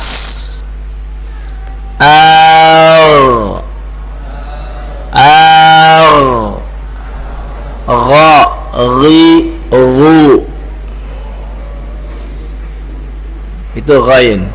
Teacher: Gain dan k ini dari tenggorokan yang atas. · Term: ghain